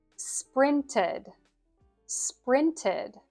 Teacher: It is ed, ed. You could think of it like a short I sound plus a D, or the schwa sound plus D.